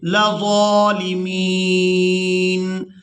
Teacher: ضا کو کھڑی زبر کی وجہ سے کھینچ کر ادا کریں گے